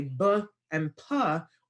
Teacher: we're pushing air through our lips it's called a stop plosive that the lips go together and there's a of air um that goes through them right